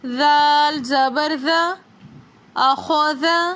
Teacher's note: زال کو پڑھتے وقت ہماری زبان کا کونا دونوں دانتوں کے بیچ میں ہوگا